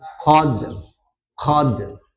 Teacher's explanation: Jadi ada ujungnya, ada r-nya tetap. Jadi tidak mutlak qalqalah qad gitu ya, tapi ada ro-nya sedikit.